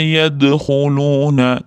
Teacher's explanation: dalda qalqala bor, yengil ro beramiz, o'rtada kelyapti.